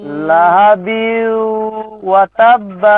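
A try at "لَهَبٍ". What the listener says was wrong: বিউ কেন হবে, বিউ নাকে আওয়াজ যাবে, বিউ, বিউ নয়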